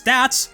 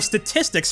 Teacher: the A makes an /æ/ sound in the shorter word, but an /ə/ sound in the longer word.